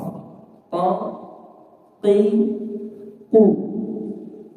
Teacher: qof ini makhrajnya lidah paling paling belakang